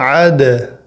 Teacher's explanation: عین کو دال سے جوڑنا ہے اور آواز قلقلے والی ہونی چاہیے دال کے ملانے کے وقت، اور عین کا آواز گلے سے کلیئر آنا چاہیے۔